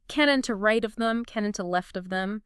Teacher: Notice how there's a strong emphasis at the beginning of each foot. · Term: trochees